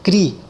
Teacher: A sílaba cri é lida com mais intensidade. Então, ela é a sílaba tônica.